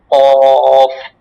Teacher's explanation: জিহ্বার গোড়া তাল বরাবর উপরের তালুর সাথে লাগাইয়া একটি হরফ উচ্চারিত হয়।